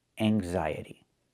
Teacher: There's no T. There's no real t sound.